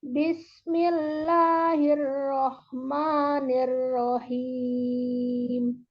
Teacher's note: Misalnya, coba Bismillahirrahmanirrahim. Datarkan aja sambil turun im. Tapi mim mim sukunnya maksud kami di ujung itu jangan ditekan. Im, jangan jangan dilajukan gitu ya.